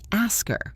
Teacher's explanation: Or ask her, we say ask her. The H disappears. If you are listening for that H, you won't hear it, and you might get confused. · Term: elision